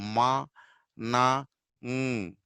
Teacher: air goes back and passes through and comes to your nose. They are called nasals.